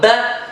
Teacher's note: دونوں ہونٹوں کے اندرونی حصے کو ملانے سے ب ادا ہوتا ہے. اندرونی حصہ یہ جو ہوتا ہے نا، یہ اندرونی حصے کو ملانے سے ب ادا ہوتا ہے.